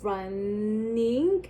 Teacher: So if you were to say the word running, I'm sure you could feel that area. So the port is opening so that the airflow could go through the nose.